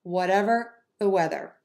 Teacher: super short for what, super short for the, link those with no pause between.